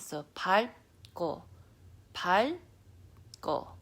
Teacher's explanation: your tongue wants to do the L sound, but then it gets shut with the B sound.